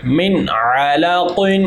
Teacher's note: قاف موٹا حرف ہے، اس لیے اس کو پر پڑھیں گے، من علاق۔ اچھا عین کو موٹا نہ کر دیجیے گا، من علاق۔